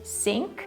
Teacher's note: a lot of Russians usually use the sound S, like instead of saying think, they might say sink